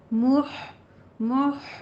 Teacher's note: دونوں ہونٹوں کو گول کر کے ادا کریں، ہا وسط حلق سے نکلنی چاہیے